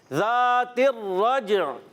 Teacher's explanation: ذال کو زا سے نہیں بدلنا, ذال کی ادائیگی کلیئر رکھنی ہے. اور یہاں پر پیارے بچوں را پر زبر آنے کی وجہ سے پر رہے گا را, اور جیم حرف قلقلہ میں سے ہے, قلقلہ ادا کریں گے, آواز لوٹ کر آئے گی.